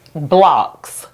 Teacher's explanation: And the second syllable in the word Roblox is blocks and that's a closed syllable. And the reason why the O is not going O in that syllable and is going ah is because the syllable ends in the consonant X